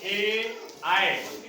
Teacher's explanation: ए का उच्चारण करते ही कंठ से हमारी आवाज निकलती है। उच्चारण करते ही, कंठ से आवाज करते ही, जब आप कंठ से आवाज करेंगे ए, बोलिए ए, आए। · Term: कंठ तालव्य